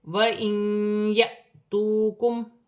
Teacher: الف پر جزم کی حرکت ہے، الف کو حمزہ پڑھا جائے گا اور جھٹکی کے ساتھ پڑھا جائے گا